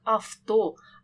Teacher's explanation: звук в українській літературній мові ніколи не оглушується і не переходить у F тому якщо ви почули таку слово